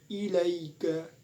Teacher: Huruf lin di sini adalah cara membacanya dengan sebab huruf ya mati setelah fathah dan cara membacanya itu dilunakkan